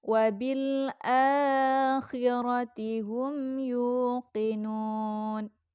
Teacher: Ra bacaannya tafkim ya, karena ini ra-nya berharkat fathah.